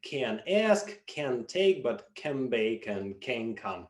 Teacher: when followed by a consonant, a nasal sound takes on the place of articulation of that consonant. Roughly speaking, the tongue assumes the same position as the following consonant sound. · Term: nasal place assimilation